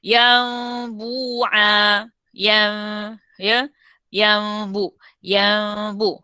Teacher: Caranya menukarkan terus bunyi nun kepada mim.